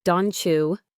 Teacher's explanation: The T changes to a ch sound. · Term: Assimilation